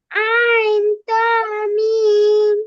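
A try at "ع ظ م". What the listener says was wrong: আইন জ, ত না, আইন জ মিম।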